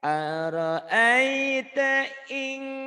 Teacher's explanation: nun mati ketemu kaf itu ihfanya banget ya